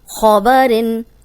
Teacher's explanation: اب اس میں صرف خو کو موٹا پڑھیں گے